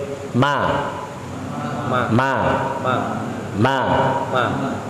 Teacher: Mim itu keluar dari bibir dan keluar dari pangkal hidung secara bersamaan. Ini namanya al-makhraj al-ijtima'i.